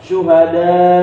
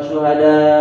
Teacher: A-nya ini jangan dibaca, tapi diberhentikan, mendadak. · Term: harus kaget